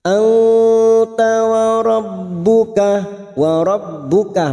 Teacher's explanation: nun sukun bertemu ta ikhfa hakiki, kita samarkan bunyi nun sukun dan mendengung selama 2 atau 3 harokat